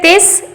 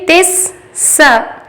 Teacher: تا کو سین سے ملائیں گے، تس، ایک سیٹی کی آواز آئے، پھر سین زبر سا، دوسری سیٹی کی آواز آئے گی، تس سا۔